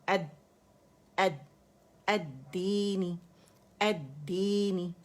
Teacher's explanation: اور دال کیونکہ ہمارے پاس میں مشدد ہے, پہلا جو ہے سکون ہے اور دوسرا جو ہے کسرہ کے ساتھ ہے, تو آواز جو ہے سپلٹس آف سیکنڈلی پاز آئے گا. پہلی دال کیونکہ اس سکون کے ساتھ ہے تو آواز سختی سے رک جائے گی